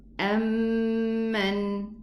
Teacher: 2 counts for the Mim, Shadda. Amman. And the Noon has Bayniyah.